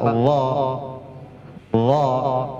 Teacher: makhraj huruf dha dha yang keluar dari ujung lidah sama gigi atas. Coba dha dha harus keluar lidah sedikit ya.